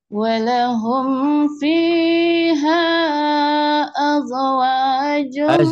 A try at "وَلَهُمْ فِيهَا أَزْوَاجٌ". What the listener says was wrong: Jangan nggak ada kol-kolah. Bukan az az. Tidak ada e-nya ya, bukan kol-kolah itu. Az.